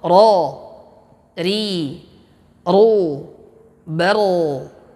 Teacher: sifat takrir, getaran, dan getarannya ini hanya cukup satu kali saja, tidak boleh lebih dari satu kali.